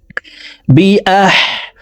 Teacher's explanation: হাকে হলকের মধ্যখান থেকে উচ্চারণ করব, হামজা হা জবর আহ।